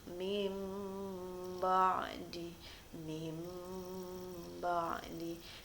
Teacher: huruf nun mati atau tanwinnya itu tidak disebutkan, tetapi di situ terselip huruf mim. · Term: iqlab